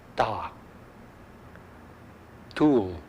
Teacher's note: In addition, you notice that this series of T is spelled with an H and this isn't. This series of T's is pronounced very close to your front teeth.